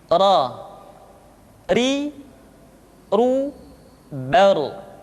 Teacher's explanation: diucapkan dengan menyentuhkan punggung lidah dengan langit-langit. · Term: huruf ra